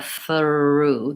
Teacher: There's kind of an of schwa in there as I'm gliding between sounds.